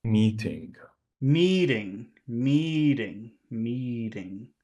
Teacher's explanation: the first one is long and the second one is really small